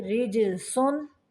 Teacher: را کو باریک پڑھیں گے اور جیم کو قلقلہ کریں گے